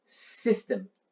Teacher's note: 英語では最初の子音は、シじゃないですよ。スですよ。